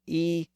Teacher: the original e sound is the highest vowel sound that can be pronounced in the front part of the mouth